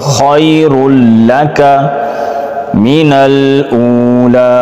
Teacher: یا لین نرمی کے ساتھ خا کو موٹا کر کے